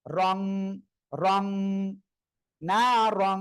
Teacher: ইকফা গুন্নাটা মূলত অনুস্বারের মত উচ্চারণ হবে · হ্যাঁ, র আলিফ দুই জবর রং, রং না রং। এই যে তানউইনের পরে ইকফার অক্ষর তা আসছে, এজন্য নাকের ভিতরে নিয়ে গুণনা করবেন।